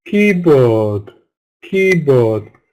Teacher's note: compound nouns stress from the first syllable but with two strong vowel sounds but we must make key longer and stronger than board